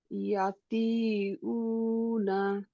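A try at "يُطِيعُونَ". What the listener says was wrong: ইয়া উপরে দাম্মা আছে, কি হবে?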